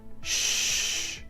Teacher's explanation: it's the part just behind the tip that is in contact with the roof of the mouth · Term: SH sound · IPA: /ʃ/